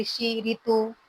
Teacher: ऋषि का उच्चारण स्थान मूर्धा से होता है